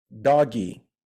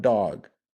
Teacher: if you are um beginner English Learner in Brazil for example you tend to say doggy instead of dog